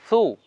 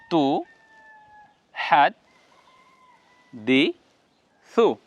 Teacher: সিন বর্ণের মত নয় সিন সিন এ দুইটা থেকে পৃথক থাকবে সা বর্ণ জিহ্বার আগাটা সামনের উপরে দাঁতের আগার সঙ্গে লাগিয়ে উচ্চারণ করতে হবে